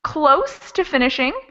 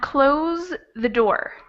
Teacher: the first one would be a voiceless s sound that would be the standard s sound so it's like a snake very quiet and the second one has voice so if you were to put your hand over your throat